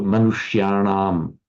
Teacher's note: Remember, there's the subdotted n there because the sh, the retroflex sh, has the same effect as a r. It makes the following n retroflex or n. So this that would be the na there, that n.